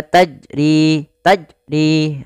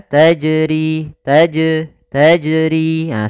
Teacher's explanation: yang harakat sukun Jim ini makhrajnya dari tengah lidah kita dan Jim ini memiliki sifat salah satunya adalah sifat Qalqalah artinya memantul itirab getar maka memantulnya harus dipantulkan Jangan sampai tidak memantul kesalahan